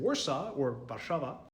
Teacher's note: W makes a V sound